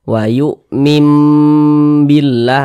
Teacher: dia digunahkan atau didengungkan jadi suaranya itu kita tahan ya kita panjangkan sejenak Wu mim Billah di bagian mimnya itu kita tahan kita panjangkan